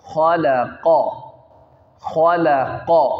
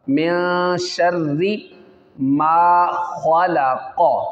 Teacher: خا موٹا ہوگا، لام باریک ہے، اور قاف پھر موٹا ہوگا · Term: حروف مستعلیہ